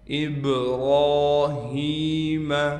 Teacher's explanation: با پر قلقلہ کیا جائے گا، را کو موٹا کر کے پڑھیں گے اور را پر کڑا زبر ہونے کی وجہ سے را کو کھینچیں گے بھی ایک الف کی مقدار، ابراہیم۔ ہا کے بعد یا حروف مدہ میں سے آ گیا لہٰذا یا کو بھی کھینچیں گے۔